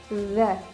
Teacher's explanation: Huruf zal makhrajnya di mana? Dia ada di ujung lidah bertemu dengan ujung gigi sari bagian atas.